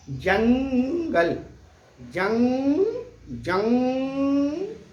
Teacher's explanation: ये अनुस्वार का जो उच्चारण हो रहा है जंग, आप देखिए नाक से आवाज सीधी आ रही है।